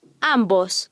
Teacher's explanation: the Spanish B and V have the same sound they are both hard after an M or n